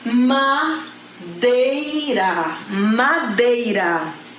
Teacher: não vogal e oe que é uma ser ah tá então iniciei com vogal e fui para semivogal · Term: decrescente